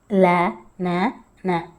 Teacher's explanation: ல அப்படின்னு சொல்லி பார்த்தீங்கனாலே மேல் பல் இருக்கும் இல்லையா, அதில் மோதுற மாதிரி இருக்கும்